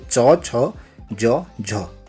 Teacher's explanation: इनके उच्चारण में हमारी जीभ तालू में लगती है। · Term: तालव्य व्यंजन